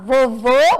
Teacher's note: vovô acento circunflexo som mais fechado